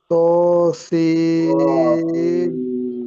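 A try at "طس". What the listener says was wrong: জি, ত সি, ত একটু মোটা করে বলবেন, ত, ত, ত সিন, ত সিন।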